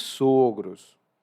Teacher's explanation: Os dois juntos são os sogros, assim com um O aberto. Agora, se você tem dois sogros, então são dois homens sogros, né? Então é um O mais fechado.